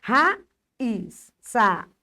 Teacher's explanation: Duas vogais aparecem juntas na palavra, mas ficam em sílabas separadas. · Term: iato